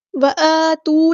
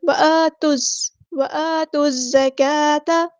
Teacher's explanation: الزکاۃ، الف پکڑا زبر ہے تو مد اصلی کریں گے، اور تا کو ہم نے زا کے ساتھ ملا دینا ہے